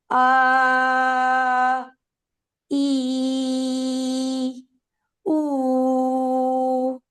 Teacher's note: उ के लिए आप एक वाइट सर्कल बनाएंगे लिप्स का। इ के लिए आपके middle part of the tongue raise होगी। और आ जो है ये डिपेंडेंट होगा पिछले लेटर के पर।